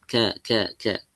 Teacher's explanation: Makhrajnya berdekatan di pangkal lidah nempel ke langit-langit. Kalau kaf agak ke depan ini ya langit-langitnya di antara ee langit-langit yang keras dengan langit-langit yang lunak ya di pertengahannya. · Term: huruf kaf